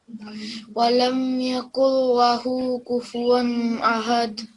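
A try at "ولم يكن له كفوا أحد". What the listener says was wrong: Okay, and kufu one is, it won't be prolonged either. Walam yakul lahu kufuwan ahad.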